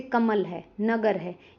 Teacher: इन शब्दों में म और ग पर ज़्यादा जोर दिया जाता है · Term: बलाघात